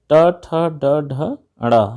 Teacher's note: ट, ठ, ड, ढ, ड़, ये मूर्धा से बोले जाते हैं